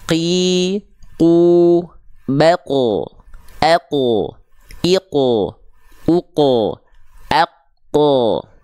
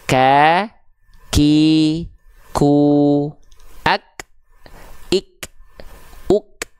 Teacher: Kalau qf lebih dalam kalau Kaf lebih luar